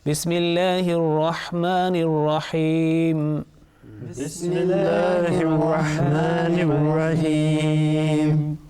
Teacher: Thin sound. Thin sound, because the previous letter, which is Mim, which is joining with Lam al-Jalala, is with Kasra. Okay, so that will be very softly Bismillahi, not with thick sound.